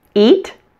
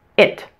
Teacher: the long e and eat is a bit longer and that the short I in it is a bit shorter